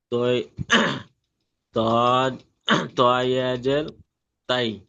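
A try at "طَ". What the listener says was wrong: জের নই, জের নিচে থাকে আর উপরে আছে, যাবার হবে।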